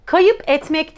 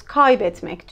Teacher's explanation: kelimenin kendi içerisindeki sesi burada düşürmüş oluyoruz ünlü düşmesi karşımıza çıkıyor